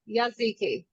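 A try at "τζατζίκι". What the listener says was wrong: It's not a Y. It's like it's a TZ. It's TZ. Tzatziki.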